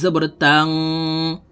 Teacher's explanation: ইকফা গুন্না নুন সাকিনের পরে ইকফার হরফ সিন আসছে এই কারণে এই নুন সাকিনকে নাকের ভিতরে লুকাইয়া গুন্নার সহিত পড়তে হবে